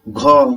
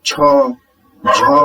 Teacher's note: ख जब हम उच्चारण करते हैं तो ऐसा लगता है, ऐसा प्रतीत होता है कि वायु थोड़ा अधिक मात्रा में बाहर निकलता है।